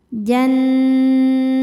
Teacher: Berikutnya ada hukum ghunah musyaddadah karena nunnya bertasydid. Cara bacanya berdengung. Dengungannya tahan kurang lebih dua harakat.